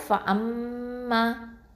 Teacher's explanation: இந்த மீம் முஷத்ததா இருக்கிறதுனால இதை வந்து நம்ம அக்மல் குன்னா பண்ணணும்